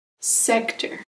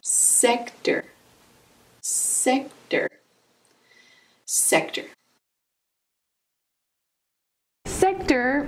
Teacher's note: Sector has two syllables. Emphasis on the first syllable.